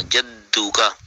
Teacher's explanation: دال پہ زور دینا ہے کیونکہ اوپر شد ہے